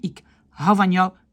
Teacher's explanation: On dit souvent pas le D, on peut l'écrire, on ne doit pas l'écrire, mais on ne dit pas ik houd van jou.